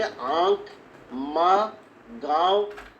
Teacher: अनुनासिक स्वरों के उच्चारण में मुंह से अधिक तथा नाक से बहुत कम सांस निकलती है।